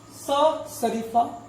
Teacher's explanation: स शरीफा वाला स, इसे हम हिंदी की भाषा में तालव्य स कहते हैं